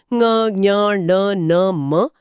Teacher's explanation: इन अक्षरों को बोलते समय हवा का कुछ हिस्सा मुंह के बजाय नाक से बाहर आता है। इसीलिए जुकाम होने पर मां की जगह बां जैसा सुनाई देता है, क्योंकि नाक का रास्ता बंद होता है। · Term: नासिक्य